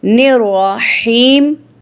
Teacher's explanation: ہا کو حلق کی طرف مضبوطی سے دباتے ہوئے باریک اور رگڑ کھاتی سانس میں پڑھیں گے